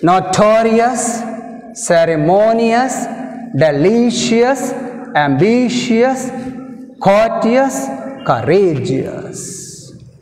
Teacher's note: all these words have stress mark on the penultimate syllable, that means second syllable from the end. Ee padalu anniti kuda meeru chusukunte second syllable ante ikkada ending nunchi rendo syllable meeda manaku stress mark vastundi.